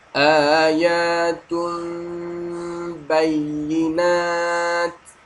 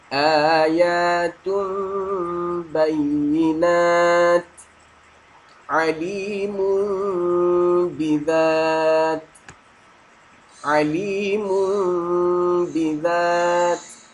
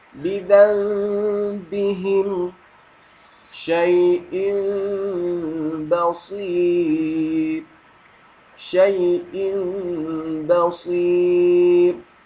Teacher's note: menukarkan bunyi nun mati atau tanwin kepada bunyi mim serta dengung dua harakat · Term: iqlab